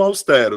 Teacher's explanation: sílaba tônica é a penúltima sílaba, então é paroxítona